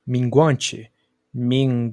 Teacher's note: o nasal velar sonora ele é outro que Tecnicamente não existe em português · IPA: /ŋ/